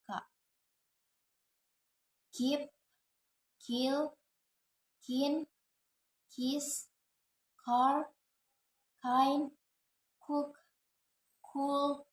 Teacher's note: Voiceless velar stop sounds